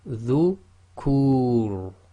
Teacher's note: the Ra acting as sakin at the end of a sentence or a stop, and the previous sound before it is the long vowel, Dhamma wow, then again it's heavy